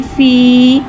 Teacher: या मद्दा को एक अलिफ यानी 2 हरकत के बराबर खींच के पढ़ेंगे